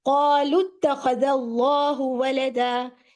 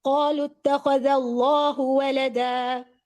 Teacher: یہ دونوں الف کا تو رول نہیں ہے، ایک پہ صفر ہے، ایک سیکریفائزنگ فادر ہے حمزۃ الوصل، اٹ ول گیٹ ڈراپ، اور وہ اتخذہ کو قالو سے جوڑنے کے لیے پوری ہیلپ کرے گا. پھر آپ نے لام کے پیش کو تا سے جوڑنا ہے